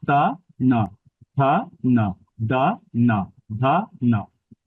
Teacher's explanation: ন টাও দন্ততেই টাচ করতে হবে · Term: দন্তগণ